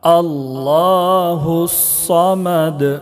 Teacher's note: صمد دال میں قلقلہ ہوگا